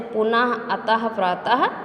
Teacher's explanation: जिस वर्ण का उच्चारण हल्के हा के समान होता है उसे विसर्ग कहा जाता है। इसका प्रयोग वर्ण के 2 बिंदुओं के रूप में होता है, जैसे पुनः, अतः, प्रातः आदि।